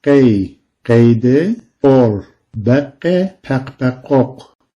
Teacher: Gırtlağa yakın olarak çıkarılan bir ses bu.